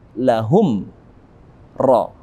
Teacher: mim mati bertemu dengan ra, maka sempurna bibir kita mengatup. Lahum ra, kita hukumi dengan hukum tajwid, yakni izhar syafawi.